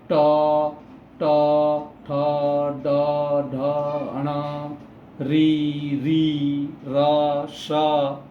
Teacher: ये जो जीभ है, जीभ हमारे मूर्धा की ओर जाकर टकराता है, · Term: मूर्धन्य वर्ण